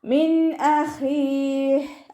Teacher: അവസാനത്തിൽ ഹാക്ക് സുക്കൂന് കൊടുത്തിട്ട് വഖഫ് ചെയ്യും.